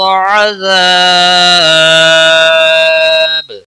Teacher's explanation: الف مدہ ہے ایک الف کے برابر کھینچ کر پڑھیں گے، با وقف کی صورت میں ساکن ہوگا، اس پر قلقلہ بھی ہوگا ، 3 سے 5 الف کے برابر کھینچ کر وقف کریں